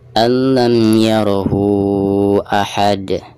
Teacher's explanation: Adapun cara membaca hak domir di sini ini dihukumi mad silah tawilah ya, karena hak domir berhadapan dengan huruf hamzah dan cara membacanya itu bisa 5 harokat ya.